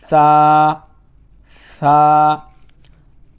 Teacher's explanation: سا کو بالکل نرمی سے پڑھنا ہے، سیٹی کی آواز نہیں آنی چاہیے